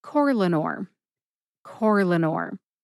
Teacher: According to the literature, no syllable is emphasized. However, when I say Corlanor, I tend to emphasize that first syllable, core